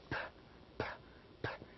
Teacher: Because if you try to pronounce p, p, p as a sound, you do not feel the vibration. So we consider p, the sound p as voiceless sound because it has no vibration.